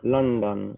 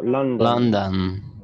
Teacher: No es London con O, sino como una O que suena como una A. London. Es una A O.